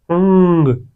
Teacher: अनुस्वार अंग, अंग आप देख सकते हो कि वो हमारे नाक से आवाज आ रही है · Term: नासिक्य स्वर